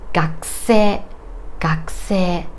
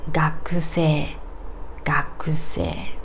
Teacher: Okay, now let's think about a word gakusei. Gakusei, k and s are unvoiced consonants, so this U is devoiced.